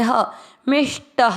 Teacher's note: ट में अ की मात्रा तो विसर्ग को पढ़ेंगे ह